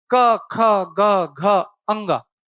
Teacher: इनको बोलते समय ध्वनि कंठ से आ रही है, और कहीं पर भी जीभ एक्शन नहीं ले रही है। क, ख, ग, घ, अंगा, जीभ आपकी कहीं भी टच नहीं करेगी, इसलिए कंठव्य है।